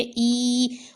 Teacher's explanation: یا مدہ ہے تو اس کو ایک الف یعنی 2 حرکات کے برابر کھینچ کر پڑھیں گے ای، اور یا ساکن سے پہلے پیش نہیں آتا۔